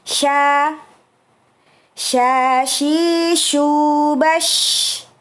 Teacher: Untuk mengucapkan shin, hati-hati bibir kita jangan bibir atas ya, terutama jangan memajukan bibir bagian atas. Karena makhrajnya bukan berada di bibir, akan tetapi berada di tengah lisan yang kita naikkan bertemu dengan langit-langit bagian atas.